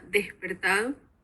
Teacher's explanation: La aspiración de la S, que se da tanto en Honduras como en Cuba